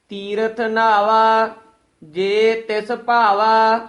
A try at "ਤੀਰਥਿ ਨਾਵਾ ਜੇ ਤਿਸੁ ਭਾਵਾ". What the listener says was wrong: ਇਹ ਵੀ ਨਾਵਾ ਪਦ ਜੋ ਹੈ ਭਾਰਾ ਉਚਾਰਨ ਕਰਨਾ ਹੈ, ਨਾਵਾ ਨਹੀਂ ਬੋਲਣਾ ਹੈ। ਜੇ ਤਿਸ ਇਕੱਠਾ ਨਹੀਂ ਕਹਿ ਦੇਣਾ ਹੈ, ਜੇ ਨੂੰ ਨਖੇਰ ਕੇ ਪੜਨਾ ਹੈ।